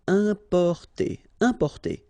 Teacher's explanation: EM, then a consonant, so it's the nasal